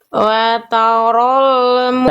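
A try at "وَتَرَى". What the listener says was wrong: Wataro, jangan watarol. Coba diulang.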